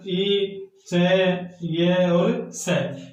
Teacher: ये चारों वर्ण तालु स्थान से बोले जाते हैं और इन्हें तालव्य वर्ण कहते हैं।